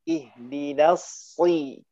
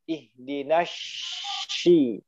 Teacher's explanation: ujung lidah di bawah gigi seri dalam, kemudian lidah yang belakangnya lebih naik. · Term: huruf Sod